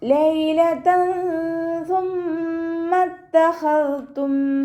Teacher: തെൻവീനിലുള്ള നൂനിൻ്റെ സൗണ്ടിനെ നമ്മൾ മറച്ചു വെച്ചിട്ട് മണിച്ചോതി കൊടുക്കുക കേട്ടോ. സാ ലൈറ്റാക്കിയിട്ട് ഉച്ചരിക്കാൻ ശ്രദ്ധിക്കുക. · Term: ഇഖ്ഫാ